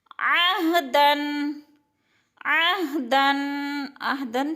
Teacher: دو زبر تنوین کے بعد فا حروف اخفاء میں سے ہے تو اخفاء کریں گے، یعنی ناک میں آواز لے جائیں گے۔